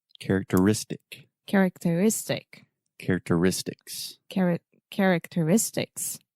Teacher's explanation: So the stress is on the penultimate syllable, the next to last syllable. And it's actually a double stress.